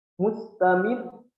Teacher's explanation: Sebisa mungkin tarfiq tetap tarfiq, akan tetapi kita sedikit menaikkan atau menekankan di ujung ayat kita, di ujung ayat yang kita baca.